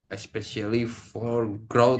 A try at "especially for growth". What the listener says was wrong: Nah, tadi kan lu di sini bilangnya pakai gap kan. Tadi di sini lu ada jeda. Lu kan tadi ada gapnya di sini.